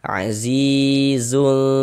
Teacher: Sehingga kita baca samar dan berdengung. Samarkan tanwinnya. Azizul. Nah, kita dengungkan sepanjang 2 harokat. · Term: ikhfa hakiki ausat